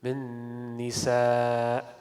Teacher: So you will merge the two noon with each other, accompanied by a gunna. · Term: idgham ma'al gunna